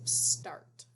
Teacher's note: This T, that consonant, shuts off that R sound.